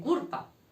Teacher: O las L's las cambian por una R